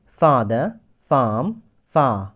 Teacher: গলা থেকে উচ্চারণ হয়েছে, কিন্তু একটু লম্বা উচ্চারণ করেছি বা লং করেছি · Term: লং আ